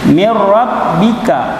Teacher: Kan aslinya tulisannya min rabbika, tapi karena dia idgham, digabungkan nun sukun dan ra, maka dijadikan rabbika